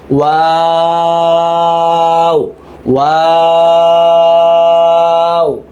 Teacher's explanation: ওয়াও হচ্ছে ঠোঁট গোল করে মাঝখান অংশ থেকে শুরু, গোল করে শুরু আবার গোল করেই শেষ